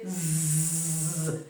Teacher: And when pronouncing the word lose, the vocal cords must vibrate towards the end because the sound is l, oo, z. When you say z, you can feel the vibration of the vocal cords.